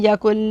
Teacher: काफ को लाम से मिला देंगे, नून को छोड़ देंगे